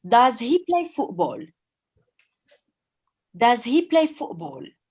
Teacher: Your main verb is play, and does is just an auxiliary. Because does is an auxiliary, the pronunciation of does needs to be light. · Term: schwa